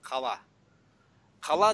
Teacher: қала деген сөз тек қана жуан дауысты дыбыстардан құралған